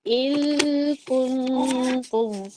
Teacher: اور نون اور کاف کے درمیان اخفا ہو رہا ہے